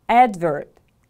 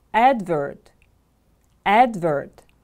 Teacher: Viewer. The stress is on the first syllable.